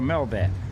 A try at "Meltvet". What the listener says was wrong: Melt. You gotta get the T in there. Melt. Melt that. There's a T though. You gotta pronounce it. Melt. He said it's Meltvet.